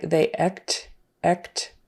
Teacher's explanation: it almost sounded like they act act with a short e instead of a short a